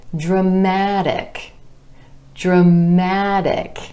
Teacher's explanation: Our stress shifts to the a vowel sound right before our suffix,